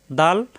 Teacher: দাল জিহ্বার আগা উপরে দাঁতের গোড়ায় লাগবে